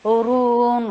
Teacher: را کے پر ضمہ کے لیے ہونٹوں کو گول اور را ہیوی